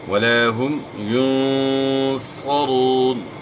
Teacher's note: را کے اوپر پیش ہے جب بھی را کے اوپر زبر یا پیش ہو تو را کو موٹا پڑھنا ہوتا ہے · ص کو اپ نے موٹا پڑھنا ہے کیونکہ صا جو ہے موٹے حروف میں سے · نون ساکن میں جو ہے نا اپ نے اخفاء کے ساتھ غنہ کرنا ہے